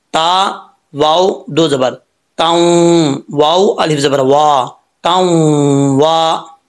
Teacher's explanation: نون تنوین کے بعد واو آ رہا ہے، واو جو ہے وہ یرملون میں سے ہے، تو یہاں پر ایک الف کی مقدار غنہ کریں گے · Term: ادغام یرملون